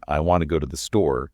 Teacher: Stress the content words, the meaning carriers. And soften the little function words the to, is, like in I want to go to the store. Stress want and store.